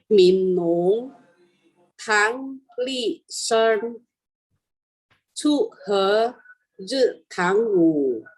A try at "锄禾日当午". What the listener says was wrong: 锄nya 2 Ibu. 锄 当nya biasa, D baca T. 好，很好锄nya tadi 2 ya, yang lainnya oke.